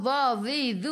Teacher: hujung lidah keluar sikit sahaja pada gigi depan.